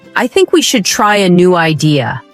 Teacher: Voice goes down at the end. This is called falling intonation and it instantly makes you sound more mature, certain, and in control.